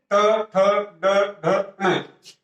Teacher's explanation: इनका उच्चारण स्थान क्या होता है मूर्धा, इससे उच्चरित होते हैं ये मूर्धा से।